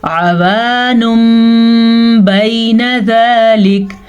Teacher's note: وقف کی وجہ سے کاف کو ہم نے ساکن کر دیا